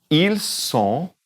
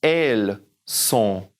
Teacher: They, the two forms of they, the first one's going to be ils sont, don't say the N, in the nose up there